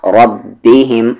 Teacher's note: را کو ہیوی کریں گے کیونکہ را کی ساؤنڈ اوپر جا رہی ہے، جس را کی ساؤنڈ اوپر یا سامنے وہ را ہیوی کی جائے گی، ربہم نہ کہ ربہم، ربہم۔